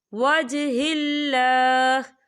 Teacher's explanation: یہاں پر اللہ کا نام باریک پڑھا جائے گا کیونکہ اللہ کے نام سے پہلے زیر ہے